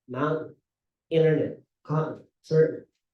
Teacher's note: Americans they don't pronounce the T anymore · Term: holding the T before